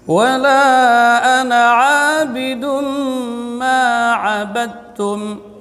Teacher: وَلَا أَنَا di sini di tengah tenggorokan. Abidum, tanwin ketemu dan mim idgham bi gunnah, ditahan 2 harakat.